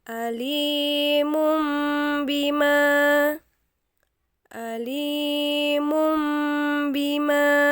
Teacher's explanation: hukum bacaan seperti ini disebut iqlab cara baca hukum iqlab yaitu mengganti huruf nun mati atau tanwin dengan huruf mim mati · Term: iklab